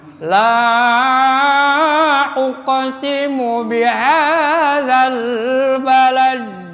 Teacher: Ini adalah madto bihadzal balad. Dal di sini qalqalah kubara.